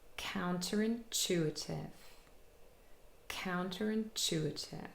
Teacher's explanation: And the main primary stress is on chu, containing a long vowel sound, but we also have secondary stress on the 1st syllable, count, and that contains also a long vowel sound because it's a diphthong containing ow. Okay, count and chew, those syllables are more stressed, and chew is the longest, and all the rest, they are unstressed.